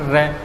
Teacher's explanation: जब हम र का उच्चारण करते हैं तो जीवा क्या करती है? जीवा में कंपन उत्पन्न हो जाता है।